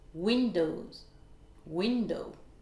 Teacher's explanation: les mots courants de deux syllabes qui ont l'accentuation sur la première syllabe